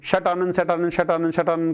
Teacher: जैसे क आप उच्चारण करके भी देखेंगे, शट आनंद शट आनंद शट आनंद शट आनंद करते करते ट ट ट अपने आप ही जो जुबान है, जो हमारी जिह्वा है, वो बदलेगी और ट का ड बनेगा ही बनेगा। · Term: घोष संधि